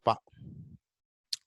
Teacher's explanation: You stop the airflow at the bilabial. It is bilabial.